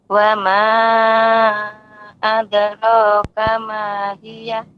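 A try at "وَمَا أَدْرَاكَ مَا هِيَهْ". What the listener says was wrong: Tambahkan lagi Ibu untuk huruf H karena dia ada hamznya, hawiyah.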